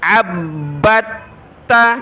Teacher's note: تو عین کو با کے ساتھ ملائیں گے, با کو تا کے ساتھ. عبت, دال کو بالکل بھی نہیں پڑھنا, با کو سخت کیا تشدید کی وجہ سے